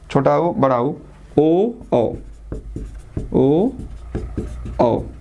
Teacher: ये अवर्तुल, ये वर्तुल स्वर, जिसे हम लोग वर्तुल स्वर भी करते हैं। इसमें ओठ जो है वो पूरा गोल होता है, ओठ जो है वो गोल होता है।